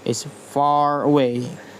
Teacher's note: spelling R is pronounced as if followed by a vowel